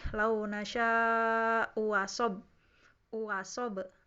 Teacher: hamzah kedua jadi mad gitu kan, antara mad dan hamzah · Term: tashil